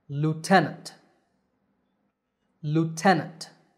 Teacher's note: in american english it's pronounced lieutenant the stress is on te